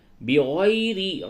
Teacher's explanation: وَيَقْتُلُونَ النَّبِيِّينَ، نون مشدد ہے، اس جگہ پہ غنہ کیجئے اور یا کھڑی زیر یہ، اس کو تھوڑا سا کھینچیں گے تو اس طرح ہوگا وَيَقْتُلُونَ النَّبِيِّينَ بغیر، یا لین ہے، یا کو نرمی سے بولیں گے، یا ساکن سے قبل زبر ہے، یہ یا لین ہے